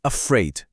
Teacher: Na palavra afraid, que significa com medo, o primeiro A é super preguiçoso. A gente não diz afraid, abrindo a boca toda. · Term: schwa sound